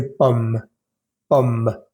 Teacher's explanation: Justo después de pronunciar la M suena o sale un pequeño aire que da la impresión de que estoy pronunciando la E, pero no es pomme, sino pomme.